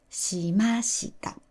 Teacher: Ma is high and shita is low, so the verb itself starts low.